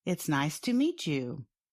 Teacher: they might make a ch sound at the end of the word meet and the beginning of the word you, although the word's spellings do not suggest this.